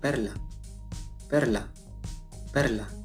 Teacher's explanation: Representa el sonido que es a grandes rasgos una E como en español, sin embargo su pronunciación es más abierta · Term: A umlaut